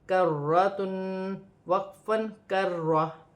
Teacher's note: وقف کی صورت میں دو پیش کی تنوین گر جائے گی، تا ہا میں بدل جائے گی، اور را مشدد ہے اور را موٹی بھی پڑی جائے گی